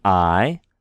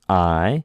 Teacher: when we have an alpha and a iota together, we don't say a-e or a-I. We pronounce that together as I. That's one sound. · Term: diphthongs